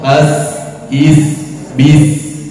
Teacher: Dan huruf sin ini mempunyai sifat sopir. Sopir itu suara burung.